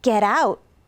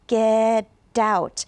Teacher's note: So that sounds almost like get out. Now, the T in English between 2 vowels will often change to a D sound. So in this case, it would probably change to a D.